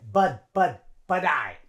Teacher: that T in but is like a D sound a little bit